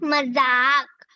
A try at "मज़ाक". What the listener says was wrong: मजाक, आपको पता है मजाक में ज के नीचे बिंदु डाला हुआ है, पता ना आपको ये कैसे बोलना है? इसको थोड़ा हल्का बोलना है, मजाक, मजाक नहीं कहना है ना।